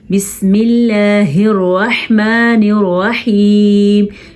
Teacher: आपने ध्यान दिया, अल्लाह का नाम बारीक पढ़ा है हमने और रहमान और रहीम की हा अदा करनी है, खौ या हा नहीं पढ़नी आपने